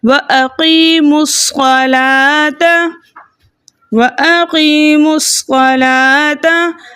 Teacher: حمزۃ الوصل درمیانی کلام میں آنے کی وجہ سے حذف ہو گیا۔ اب ہم میم کے پیش کو صاد مشدد میں چھپے صاد ساکن کے ساتھ ملا کر پڑھیں گے۔